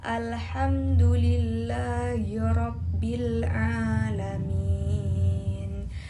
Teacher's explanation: Ain makhrajnya tengah tenggorokan. Sifatnya jar, tawasud, istifal, dan infita.